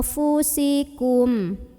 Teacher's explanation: Karena ada nun sukun yang ketemu sama huruf fa. Maka cara membunyikan nun sukunnya ini adalah samar-samar menuju huruf fa sambil dengung. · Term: ikhfa ausat